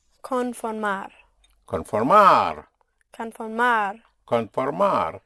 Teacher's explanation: But since you have an whenever you have a consonant at the end, you have to hit the ending. The one single stress will be at the end.